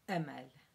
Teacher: there's a slight glottal stop just between the E and the M